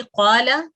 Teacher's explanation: लाम के ऊपर फतह है, लाम मफ्तूह है, सिर्फ 1 सेकंड इसको हमने खींचना है। अगर तो आप इसको मुनासिब जैसे लिखा हुआ है वैसे ही खींचेंगी क़ाला तो इसका मतलब होगा उसने कहा।